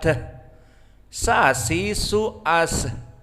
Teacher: Maka di saat disukunkan dia ada udara yang keluar. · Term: hams